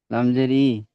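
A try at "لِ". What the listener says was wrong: লামজের ই হয় না, লামজের লি হয়। বিষয়, লামজের লি গুলো পিছনের পড়াতে। তাহলে লাম খারাজের লিটাই বলবেন, টান দিয়ে বলতে হবে, লাম খারাজের লি।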